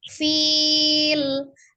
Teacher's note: Letakkan terakhirnya itu di akhir makharijul huruf lamnya diucapkan ya. Jadi tepi lidah secara bersamaan itu dengan ujung lidahnya bertemu dengan gusi atas ya, dengan agak memiringkan inhiraf ujung lidahnya kiri dan kanan